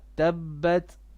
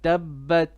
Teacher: Now, tabbat on the ta, a little bit of hams, no qalqala. Tabbat. تبت.